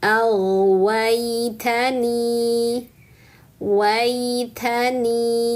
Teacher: harfun lin, sempurnakan wa lalu naikkan tengah lidah untuk ya sukun.